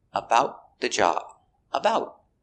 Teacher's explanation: the te at the end of about is a stop te so put your tongue up and stop the air